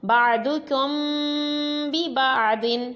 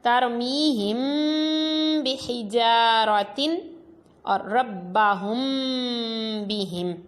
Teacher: میم ساکن کے بعد با ہے تو غنہ کر کے پڑھا۔ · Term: اخفاء شفوی